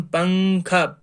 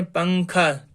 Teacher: یہ فرماتے ہیں کہ اگر تنوین یا نون ساکن، ہم نے آپ کو بتایا کہ تنوین کسے کہتے ہیں اور نون ساکن کسے کہتے ہیں، اگر تنوین اور نون ساکن کے بعد ان 15 حروف میں سے کوئی حرف بھی آ جائے تو اس وقت نون کی آواز کو ناک میں چھپا کر اس میں اخفاء کرنا ہے